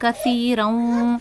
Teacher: سا کا مخرج ہے زبان کی نوک، سامنے والے دانت